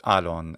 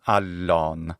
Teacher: He also can't do geminate, so he says alon instead of allon, which is how it should be.